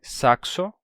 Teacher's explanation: esse encontro consonantal representado pela letra X, que é o som de c mais o som de s. E o primeiro elemento se vocaliza.